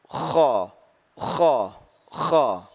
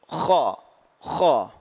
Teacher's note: Sifat isti'la ini adalah pangkal lidah itu terangkat. Pangkal lidah terangkat dan disertai dengan suara tebal.